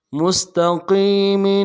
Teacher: میم کو سین کے ساتھ ملانا ہے، سین کی سیٹی باریک کریں گے، اور تاکہ نرم سے ادا کریں گے.